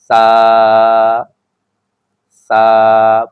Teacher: زبان کا جو نوک ہوتا ہے دانت کے اوپر والے حصے میں جب آپ لگائیں گے، اوپر والے سامنے کے جو دانت ہوتے ہیں ان کے کنارے سے جب آپ لگائیں گے تو سا ادا ہو جائے گا